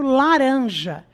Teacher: que é do Nordeste, omite o S dizendo laranja, mesmo ao se referir a mais de uma fruta.